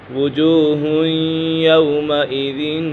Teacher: یہاں پر تنوین کے بعد یا حروف یرملون میں سے ہے تو یہاں غنہ ہوگا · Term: ادغام یرملون